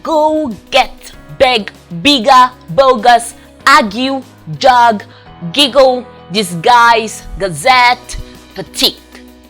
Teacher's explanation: the roof of your mouth to produce this sound [Music] good voice stop made with the back of the tongue and soft palate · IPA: /g/, /g/ go